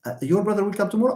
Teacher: I stress the word brother